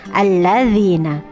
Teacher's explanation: Ada lam ta'rif atau alif lam bertemu dengan lam, maka harus dimasukkan dulu idgham ya. Idgham syamsiyah alladzina.